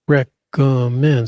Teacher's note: Stress on the third syllable.